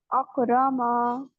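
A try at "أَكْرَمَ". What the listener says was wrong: अकरमा, मा लंबा नहीं करना, अफलहा लंबा नहीं करना, अगतशा एंड एंड पे अलिफ नहीं लगाने खुद से, अफलहा।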